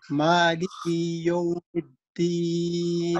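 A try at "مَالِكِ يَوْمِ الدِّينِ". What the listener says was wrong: اچھا، یہ مالکی کو لمبا نہیں کرنا، مالکی یوم الدین، کاف کے نیچے زیر ہے تو اس کو بالکل شارٹ سا پڑھنا ہے، لمبا نہیں کھینچنا، اس کو ہے جس کے اوپر مد ہو، کھڑی زبر ہو، یا جو قاعدہ میں نے بتایا یا سے پہلے زیر ہو، جو مفرد الفاظ ہے جن کے اوپر زبر زیر پیش ہو،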